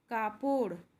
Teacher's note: সেগুলি হলো প্রথম পিঠ দেখো এটির হবে ড এ বিন্দু র এখানে যে র এর উচ্চারণটি আসছে সেটি একটু জড়িয়ে হবে